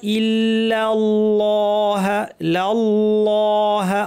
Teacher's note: আল্লাহের লামটা শুধু ভারি আগের লামটা কিন্তু পাতলা